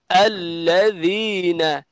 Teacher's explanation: জাল বলার সময় জিহ্বা বের করে দিতে হবে